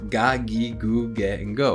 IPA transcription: ga gi gu ge go